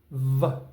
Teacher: You'll feel the air come out and you'll feel the vibration on your teeth and your lip.